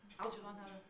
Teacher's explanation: So, the 3 syllables of Algernon are a bit quicker.